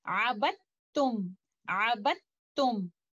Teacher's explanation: we will merge letter Dal into letter Ta, and this idgham will be idgham kamil of Mutajaanisaan letters where they are in a Saghir relationship.